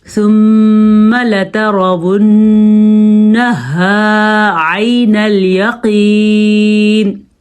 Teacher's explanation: میم کا غنہ ادا کرنا ہے, نون کا غنہ ادا کرنا ہے, ہا کو اپنی جگہ سے نکالنا ہے.